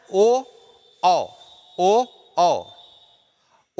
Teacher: हल्का सा दबाव पड़ता है कंठ के पास, और ओठों की आकृति में थोड़ा सा परिवर्तन होता है, ओ, औ। तो ओठ और कंठ दोनों के सहारे इनका उच्चारण होता है, इसलिए इनको कंठोष्ठ कहते हैं।